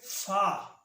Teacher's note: فا ثنایا علیہ کا سرا اور نیچے کے ہونٹ کا اندرونی حصہ